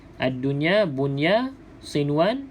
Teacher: Maksudnya kita tak baca dengung kita baca jelas sebab kat sini bukan di sini izhar mutlak namanya sebab Apa